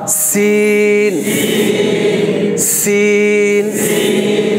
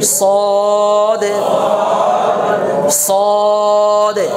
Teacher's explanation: মানে একই রকম এই সিন আর সদের কাছাকাছি তবে সদটা মোটা সিন হচ্ছে পাতলা হরফ সদ হচ্ছে কি মোটা হরফ